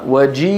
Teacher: الصوت أين نشأ؟ في الوترين، ثم مر الصوت على الفم وهو متوضع بوضعية معينة هي مخرج الياء